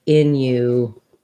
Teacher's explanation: Innuendo does have this glide, which means it has the U sound.